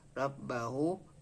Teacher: Nama tajwidnya adalah masilah qasirah sebab ha dhamir berhalakat dhammah terbalik dan huruf ra dibaca tafkhim sebab berhalakat fathah